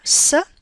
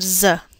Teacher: to the z sound is a vibration of your vocal cords the S is a voiceless sound while the Z is a voiced sound